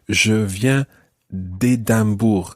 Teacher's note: you drop the E of de and you run it into the next word with an apostrophe.